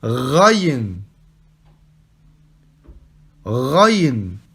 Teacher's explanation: Ici, pour prononcer le début de la lettre, c'est comme si vous aviez de l'eau au fond de la gorge, d'accord ? Et que vous nettoyez le fond de votre gorge. Rrr. Donc vous dites Raïn.